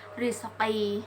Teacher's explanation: ro tarqi atau dibaca secara tipis apabila ro tersebut berharakat kasrah atau ro sukun ee dan sebelumnya itu huruf hijaiyah yang berharakat kasrah.